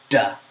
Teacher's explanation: when you say da, the tip of your tongue comes in contact with the roof of your mouth.